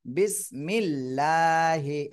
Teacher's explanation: আল্লাহ শব্দের ডানে জের থাকলে সেখানে চিকুন করে পড়তে হয়